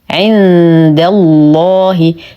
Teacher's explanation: ننتقل من فتحه الدال الى تجديد اللام المغلظه في اسم الجلاله جل في علاه لانه سبق بفتح ولو وقفنا على الهاء نقف بالاسكان ونعطي المد العرض للسكون حقه